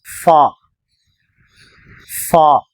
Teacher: ஃபா மேல் பற்களை கீழ் உதடில் ஒட்டியவாறு வைத்து ஃபா ஃபா எதார்த்தமாக ஆரம்பத்தில் இது வந்தால் அந்த எழுத்துடைய பாதிப்பகுதிதான் எழுதப்படும் இடையில்